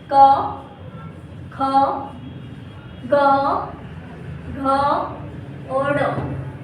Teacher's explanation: कंठी व्यंजन है जिनका उच्चारण कंठ से होता है।